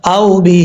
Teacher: یہاں پہ مد منفصل ہے، 2.5 الف کے برابر اس کو لمبا کر کے پڑھیں گے